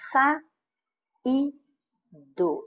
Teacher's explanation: você realmente tem uma palavra paroxítona, porque a penúltima sílaba é tônica, mas ela não é terminada em ditongo.